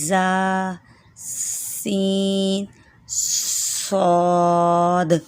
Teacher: تینوں میں شروع میں سیٹی کی آواز نکالنی ہے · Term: سختی والے حروف